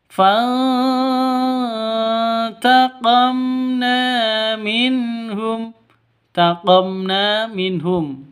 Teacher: Cara bacanya disamarkan, didengungkan, samar, didengungkan, siap-siap ke huruf t-nya ya. Samar, didengung, didengungkan siap-siap ke huruf t-nya karena ikhfa haki hakiki. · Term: ikhfa hakiki